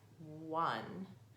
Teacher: it has an unusual sound for the letter O it sounds like it starts with the W